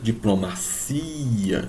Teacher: Então, a sílaba tônica no português é o cia.